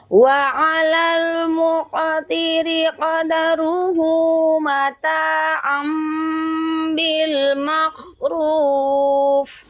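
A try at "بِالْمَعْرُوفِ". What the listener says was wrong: Ayo huruf ainnya. Ya, nanti Ibu pertama belajar mensukunkan huruf ain. Nah, dinaikkan ma'ruf lagi. Nah, jadi antara ma sama huruf ain itu jelas bedanya.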